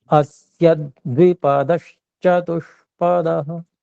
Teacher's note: अस्य, अ जो है वो भी सकार और यकार के संयोग से पहले है, फिर जी जी द्वि जो है वो भी संयोग है, तो अस्य में जो य में अ है वो भी थोड़ा दबाने की आवश्यकता है, गुरु करने की आवश्यकता है